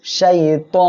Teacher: আমরা এখানে ওয়াকফ করলে শেষ অক্ষরে সাকিন হবে, আর এক আলিফ মদ এর পরের অক্ষরে এখানে ওয়াকফের কারণে সাকিন হয়, 3 আলিফ টেনে পড়তে হবে, মধ্যে আরজি হচ্ছে এজন্য।